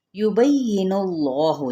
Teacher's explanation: اس میں جلالہ کا جو لام ہے وہ پر پڑھا جائے گا موٹا کر کے کیونکہ پیچھے پیش ہے